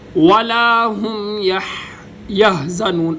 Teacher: سینے کا زور لگا کر گلے کے سب سے نیچے حصے سے ہا ادا ہوگی